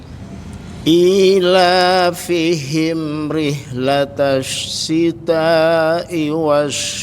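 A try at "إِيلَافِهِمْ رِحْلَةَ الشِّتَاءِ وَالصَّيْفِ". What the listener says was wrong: Tanya agak panjang dikit ya Pak. Rih juga sama.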